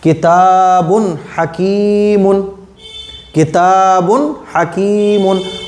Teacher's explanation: اس میں اظہار ہوگا اس لیے کہ تنوین کے بعد حروف حلقی میں سے ہا ہے